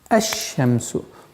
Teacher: То есть мы произносим фатха здесь и переходим на удвоенный знак. Лям, буква лям в артикле аннулируется и получается «аш-шамсу» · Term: солнечные буквы